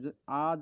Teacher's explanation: আ যখন বলো জীবের মাঝখানে অংশটা দেখবে উঁচু হয়ে যায় আর আমাদের ঠোঁটটা কি হয় আ যখন বলি ঠোঁটটা প্রসারিত হয়